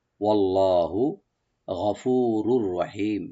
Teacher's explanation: ওয়াল্লাহু, ওয়া ওপেন রাখবেন, লফজ জালাল এখানে আমরা মোটা করে পড়বো ডিপ করে